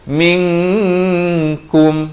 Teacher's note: Di sini ikhfa hakiki. Jangan baca minkum, mestilah samarkan dengan 2 harakat.